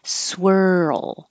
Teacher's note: making noise in your throat as you go from the r to the L that's what makes the roll noise and then hold your tongue oh and the L position for